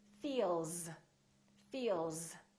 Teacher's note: That's a voiced sound. Therefore, the S sounds like Z